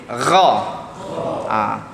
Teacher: Bagi ada geseran di langit. Di langit keras. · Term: huruf yang meninggi